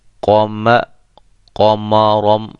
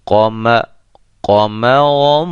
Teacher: قاف اور را یہ دونوں موٹے ہیں اور ان کے درمیان میں میم باریک حرف آ رہا ہے، لہذا بڑے اہتمام کے ساتھ ہم اس کو پڑھیں گے تاکہ میم بھی قاف کے ساتھ موٹا نہ ہو جائے۔